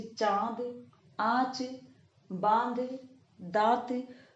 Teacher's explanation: जब आप इसका उच्चारण करेंगे तो आपको स्वतः पता चल जाएगा कि किस तरह से इन शब्दों का उच्चारण करते समय हवा नाक और मुख दोनों से निकलती है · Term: अनुनासिक